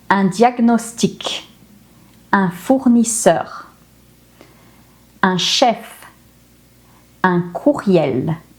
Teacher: the word ends with a consonant, but because those consonants are C, R, F, or L, I pronounced the consonant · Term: the careful rule